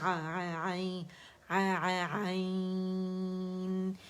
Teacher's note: عین واضح کرنا بہت ضروری ہے. ٹھیک ہے, عین, عین, اسے حمزہ نہیں بنائیں گے